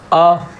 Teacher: अ को हम कंठ से पढ़ते हैं